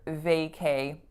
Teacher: the strongest syllable is of course the first